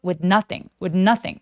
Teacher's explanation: 여기 th는 시 받침처럼만 처리하죠.